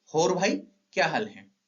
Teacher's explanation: औ का ओ सुनाई देता है